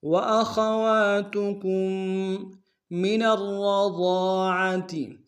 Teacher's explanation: نون کو را کے ساتھ ملائیں گے، را کے اوپر تشدید زور دیں گے، دونوں را کو موٹا ادا کریں گے